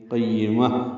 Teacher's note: گے، یا سے ملائیں گے، قیمہ، یا کو جلدی پڑھیں گے، میم کو تا مربوطہ سے ملا دیں گے، وقفاً یہ ہا میں تبدیل ہو جائے گی ، قیمہ، اور اس پہ ہمس ہوگا، جن میں درست یعنی